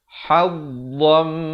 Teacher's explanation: Hukumnya di sini idgham bi gunnah. Asalnya hadzan. Tapi bertemu mim jadi hadzam. Tetapi didengungkan dua harakat.